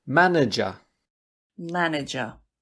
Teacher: 3 syllables. Stress is on the first.